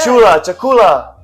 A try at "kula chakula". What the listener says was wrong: It's kula chakula. You said chula chakula.